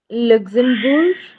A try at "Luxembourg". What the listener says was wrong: Yeah, it's not le, it's Luxembourg. Okay, French में Luxembourg.